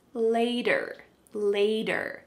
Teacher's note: there's a T, but it sounds like a D.